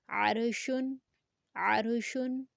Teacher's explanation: زبر ما، ابراہیم، عین روا زبر عر، شین دو پیشن، عرشن، روا ساکنہ سے پہلے زبر ہے اس لیے را کو پر پڑھیں گے